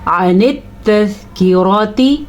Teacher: रॉ को हम पुर पढ़ेंगे क्योंकि रॉ के ऊपर ज़बर है।